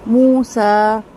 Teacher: دیکھیں ابراہیم کا میم لمبا نہیں کیا کیونکہ یہاں پر صرف زبر ہے نا، لیکن موسیٰ کا سین جو ہے وہ 2 حرکت لمبا کیا کیونکہ یہاں پر کھڑا زبر ہے